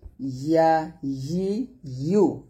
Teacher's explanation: ইয়া জিহ্বার মধ্যখান তার বরাবর উপরে তলের সঙ্গে লাগিয়ে ইয়াটি উচ্চারণ করবেন।